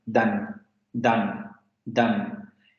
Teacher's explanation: en las variantes del francés del sur de Francia, valga la expresión, las vocales nasales no son muy comunes. Lo más común es que se pronuncie como en español, ¿no?